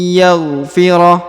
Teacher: Nun sukunnya menjadi hilang karena melebur ke huruf ya